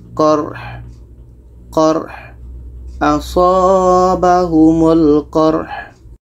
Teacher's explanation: Ha ini letaknya di tengah-tengah tenggorokan kita. Maka ha ini tetap dibaca.